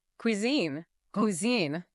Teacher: Note the Q sound at the start and the stress on the second syllable.